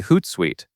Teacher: The hoot portion comes first, then the sweet portion right after it. Keep the emphasis on the first part, so it feels like the name begins with hoot,